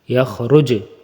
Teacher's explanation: وقفن میں جیم کے اوپر قلقلہ ہوگا، سکون آ جائے گا اس لیے قلقلہ